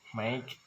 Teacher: The vowel sound of make is actually a double vowel or diphthong, make, and represented by a conspicuous symbol.